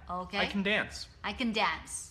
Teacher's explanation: So I put stress on the verb dance That's correct